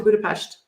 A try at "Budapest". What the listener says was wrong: Budapest, yeah. Everyone says Budapest, but it's pronounced SH, Budapest.